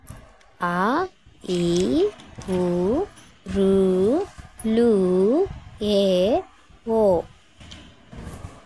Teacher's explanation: దీర్ఘ అచ్చులు ఇవి కూడా ఏడే ద్విమాత్రాకాలంలో ఉచ్చరిస్తాం